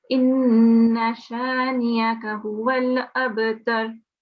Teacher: I will recite it for you because we also have to have a nun mushaddad here where we have to prolong for 2-second nasalization